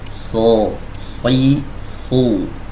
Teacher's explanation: Kemudian kalau kita perhatikan juga di sini bagian tenggorokannya agak sedikit menyempit, teman-teman. Saat kita mengucapkan huruf shad, so, terasa di tenggorokan ini ya menyempit.